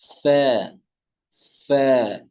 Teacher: এখান থেকে হয় ফ্যা খুব সহজে তাড়াতাড়ি করে ফ্যা নিচে দাঁতের উপরের দু দাঁত নিচের ঠোঁটের পিঠে লেগে